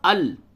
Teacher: دیکھیں یہ لام ہے تو یہاں پہ ادغام بلا غنہ، ال صرف نون کو لام سے ملا دیا، ال ہو گیا، ادغام کر دیا، ایک حرف کو دوسرے حرف میں ملا دیا